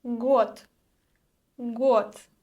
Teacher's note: The voiced d at the end loses its quality and we pronounce the voiceless t.